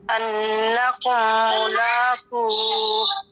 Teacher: ملاقو میں دیکھیے قاف ہے, پھر اس کے بعد واو ساکن ہے, لمبا کریں گے, واو مدہ ہے. پھر اس کے بعد اگر ہم ہا کو ساکن کرتے ہیں تو پھر اینڈ میں ہا کی ساؤنڈ آنا لازم ہے.